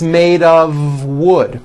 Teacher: it's not off wood with an unvoiced f it's all voiced and it's all connected